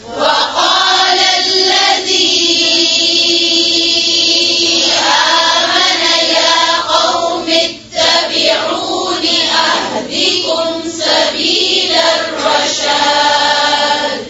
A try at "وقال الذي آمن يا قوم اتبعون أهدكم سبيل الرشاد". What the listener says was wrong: फिर से पढ़ें, जेर जबर पेश को लंबा नहीं खींचें.